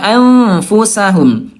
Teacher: nun mati bertemu dengan fa, dia sama-sama juga awsat. Siap-siap ke fa, ya alfu. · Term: ikhfa awsat